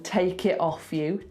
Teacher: And if we were being Californian, we would say take it off you with a D, but he doesn't, he goes take it off you. He drops the T completely, so that's quite London. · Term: drop a T